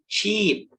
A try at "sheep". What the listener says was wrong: Sheep, good.